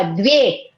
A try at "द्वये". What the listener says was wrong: द्वे द्वय द व य त्रणे बोलवा પડશે ખાલી દ્વે બોલશો તો ય નહીં બોલાય, તમે દ્વે જ બોલશો. દ્વયે નહીં દ્વય દ્વય द्वय द्वय बोलना है क्योंकि तीनों बोलना है.